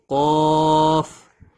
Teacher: قاف موٹی اور جھٹکے والی ہوتی ہے